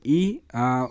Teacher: जीभ की स्थिति के आधार पर आपका अग्रभाग है, जीभ के अगले भाग से बोला जाता है। ओठ की स्थिति के हिसाब से अवृत्तमुखी है।